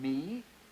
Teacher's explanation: the bilabial nasal as in me